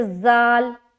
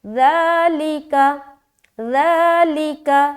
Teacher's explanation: دیکھیے زبان کی نوک ہلکی سی باہر دکھتی ہے جب بھی ہم حرف ذال کو ادا کرتے ہیں، اور حرف ذال میں نرمی کا خیال رکھنا ہے اور یہ خیال رکھنا ہے کہ اس کو ادا کرتے وقت سیٹی کی آواز نہ نکلے